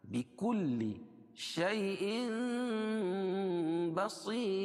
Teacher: تنوین کے بعد با آئے تو تنوین کو میم سے بدل کر غنہ اور اخفا کے ساتھ پڑھنے کو اقلاق کہتے ہیں. · صاد کو موٹا پڑھیں گے اور وقف کی حالت میں یہ را باریک ہوگی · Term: اقلاب